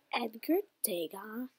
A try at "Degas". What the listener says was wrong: Yeah, but you don't pronounce S. Degas.